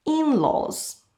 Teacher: And we put the stress on the first vowel, in laws. We can also talk about interesting characteristics we share with family members.